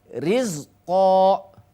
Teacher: Ro sukun dibaca tipis apabila berbaris kasroh. Ro berbaris kasroh asli ya harus dibaca tipis